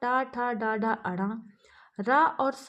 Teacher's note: टा वर्ग अर्थात टा ठा डाढ़ा अड़ा, रा और सा का उच्चारण स्थान मूर्धा है। इसलिए इन्हें मूर्धन्य वर्ण कहते हैं।